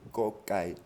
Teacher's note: Kokai, c'est ni un que, ni un ge, c'est entre les deux. Entre le que et le ge.